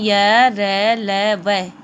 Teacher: ये है कंठ और तालु से इनका उच्चारण किया जाता है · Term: अंतस्थ व्यंजन